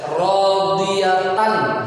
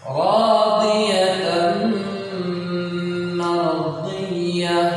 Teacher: tanwin bertemu dengan huruf mim, maka jadilah dimasukkan ke dalam mim